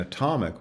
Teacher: atomic which has the schah in the first syllable